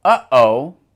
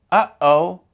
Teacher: in English, when we say, uh-oh, we produce that sound by cutting the airflow. Uh-oh. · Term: glottal stop